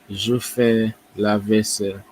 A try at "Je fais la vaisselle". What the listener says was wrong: Très bien, très bien.